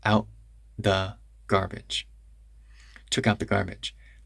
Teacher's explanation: Personally, I do the glottal stop first. So I do a full glottal stop, then the TH.